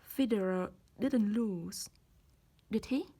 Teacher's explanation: rising intonation when we really want to know some things and are not sure of the answer